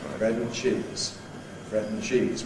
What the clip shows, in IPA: ˈbred n̩ ˈʧiːz